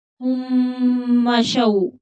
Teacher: दाद हरूफ मुस्तालिया है तो मोटा पड़ा जाएगा। हुम्मा शौ, मीम मुशद्दद है तो यहाँ गुन्ना होगा। हुम्मा शौ, वाव लीन है तो थोड़ा नरमी के साथ जल्दी पढ़ेंगे।